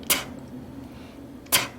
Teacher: 그래서 티의 소리도 탁 탁 하고 바람이 빵 하고 나가야 되겠습니다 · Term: 터지는